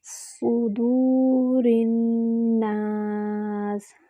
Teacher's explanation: صدور الناس، صاد پہ ضمہ ہے، ہونٹوں کو مکمل گول کریں گے اور صاد میں سیٹی ہوتی ہے اور سیٹی کی آواز موٹی آئے گی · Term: موٹا حرف